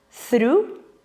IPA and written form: θruː (Through)